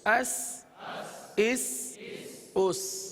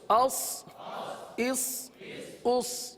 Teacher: سین اور صاد میں ایک نمایاں فرق ہے. سین کو باریک پڑھا جاتا ہے اور صاد کو پر پڑھا جاتا ہے